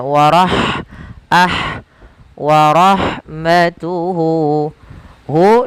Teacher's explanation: lafal ha ketika dia sukun maka huruf han-nya itu dialirkan nafasnya